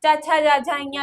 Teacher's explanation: च छ जा झा इया, तालु से जबान टकराती है।